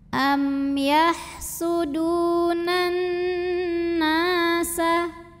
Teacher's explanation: Maka cara bacanya dipanjangkan nunnya 2 harokat. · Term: mad tabi'i zahiri